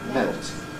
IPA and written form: melt (Melt)